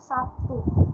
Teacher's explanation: bunyi B berubah menjadi P, akibat pengaruh dari bunyi T. Dalam kasus pada kata Sabtu ini asimilasi fonemis karena menyebabkan berubahnya identitas dalam sebuah fonem.